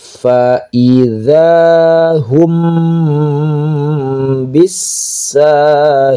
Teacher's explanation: fa ingat menggunakan huruf f, ada nafas, nah yang keluar bukan pa. Fa idza, za di ujung lidah.